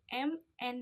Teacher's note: dihasilkan dengan aliran udara yang melewati rongga hidung saat langit-langit lunak diturunkan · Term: nasal